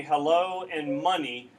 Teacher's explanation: you're going unstressed stressed unstressed stressed with your syllables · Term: iambic